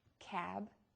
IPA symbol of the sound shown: k